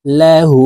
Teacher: উল্টা পেশের উচ্চারণ ঠোঁট গোল করে এক আলিফটি নিয়ে পড়িতে হয়